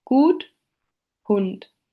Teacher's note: Now we come to the back vowels. The closed back rounded vowel occurs in good while the short version is in hund